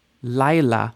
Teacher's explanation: Now you notice you don't really hear the yod, right? It's not la, it's Laila, night, Laila.